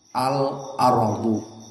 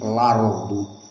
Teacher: Maka di antaranya seperti al-ardu, maka hamzahnya dihapus dan harakatul hamzah dipindahkan kepada lam yang sebelumnya. Al ardu menjadi lardu. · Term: annaql, an-naql